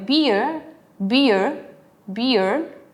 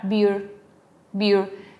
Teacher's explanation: en British ocupan mucho el diptongo ye, por ejemplo, ye, que en American se reemplaza por la schwa